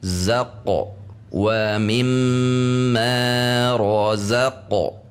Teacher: Qaf ketika sukun harus memantul. Memantulnya harus tebal karena qaf memiliki sifat yang tebal.